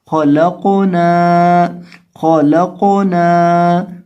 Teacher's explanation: قاف کو یہاں ہلا کر پڑھیں گے اور نون کو ایک الف کے برابر لمبا کریں گے کیونکہ اس کے ساتھ الف ہے. · خا کو اور قاف کو دونوں کو موٹا کریں گے اور نون کو لمبا کریں گے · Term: حروف قلقلہ